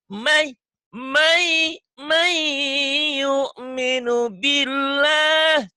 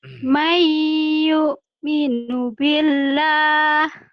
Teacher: Mai ini idgham bigunnah ditahan ya